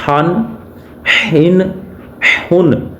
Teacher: جو دوسرا ہا ہے اس کی آواز آپ نے حلق کے درمیان والے حصے سے نکالنی ہے